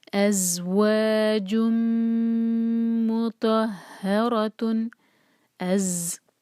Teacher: الف لائٹ اور زا پر بزنگ ساؤنڈ، واو جب بھی ہم پڑھیں گے ہمارے ہونٹ جو ہیں گول ہونے چاہیے، ہونٹوں کو گول کر کے واو نکالیں گے، و 2 حرکہ مد طبعی ہے، آگے ہے جن نہیں پڑھیں گے، جیم کو میم سے جوڑیں گے، جم، ادغام ہے غنہ کے ساتھ اور یہاں میم کے ساتھ۔